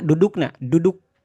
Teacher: Duduk itu kan ujung lidahnya itu nempel ke langit-langitnya Bu ya.